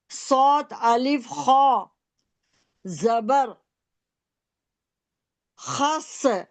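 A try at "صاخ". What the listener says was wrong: نہیں نہیں، صاد کی آواز آئے گی۔ سو کھینچے نا صاد کو۔ سوخ، خو کو ساکن کریں۔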